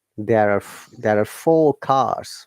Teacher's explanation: because r is in between two vowels we have to pronounce it